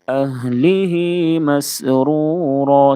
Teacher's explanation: سین کی ادائیگی میں سیٹی جیسی آواز نکالیں گے